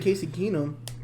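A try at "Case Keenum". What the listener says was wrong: It's not Casey, it's Case. It's Case. Case Keenum.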